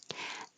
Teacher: your tongue rises for the I and now you slide it down